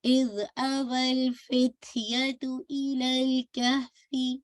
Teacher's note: از آواز چلے گی لیکن باؤنسنگ افیکٹ نہیں آنا چاہیے